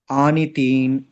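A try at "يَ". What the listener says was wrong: ఇది కింద ఉన్నాయి కదా 2 చుక్కలు. పైన ఉంటే తా చెప్పేవాళ్ళు. కింద ఉన్నాయి కదా. కింద ఉంటే యా వస్తుంది. యా ఫథ యా.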